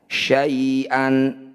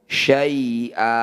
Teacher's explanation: Harokat fathah tanwin dihentikan disebut bacaan mad nyiwat. Cara bacanya bunyi fathah tanwin kita ganti jadi fathah panjang.